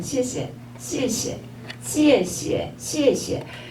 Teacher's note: 그때는 똑같이 X를 하는데 이게 그 쌍시옷 발음 된 소리가 좀 나죠